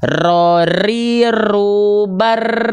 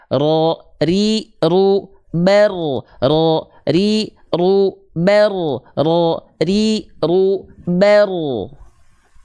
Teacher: namanya adalah sifat takrir Apa itu takrir takrir itu artinya adalah eh bergetar tapi bukan dengan getaran yang berlebihan getarannya sedikit saja